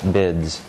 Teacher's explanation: Notice it's not bids with an S, a voiceless alveolar fricative. It's bids with a Z.